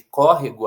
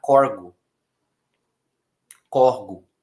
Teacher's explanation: como se essa palavra fosse não proparoxítona, mas paroxítona